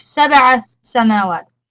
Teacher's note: It's from حروف قلقلة, so make sure that you bounce on it